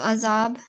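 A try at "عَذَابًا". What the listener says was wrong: No, tanween should be changed into a fatha, and how would you pronounce it? Azaba. So prolong this. Azaba.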